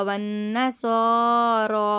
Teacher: नून मुशद्दद का हम गुन्ना करेंगे, उसको 3 अलिफ की मिकदार खींचेंगे